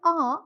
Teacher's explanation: So what I mean is that when you pronounce or when you articulate these back vowels, here at a the tongue is in a resting position, that is low in the mouth